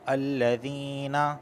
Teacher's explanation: یا ساکن سے پہلے زیر آیا ہے، اس وجہ سے میں اسے کھینچ رہا ہوں